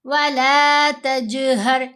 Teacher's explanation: جیم پر کلکلا کریں گے اور ہا کو گلے کے بالکل نیچے والے حصے سے ادا کیا جائے گا